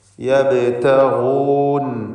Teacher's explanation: യബ്തഗൂൻ, ഇതിലുള്ള ഗൈനിന് ഇസ്തിഅലാഇൻ്റെ അക്ഷരമായതുകൊണ്ട് തഫ്ഖീം കൊടുക്കുക, തടിപ്പിക്കുക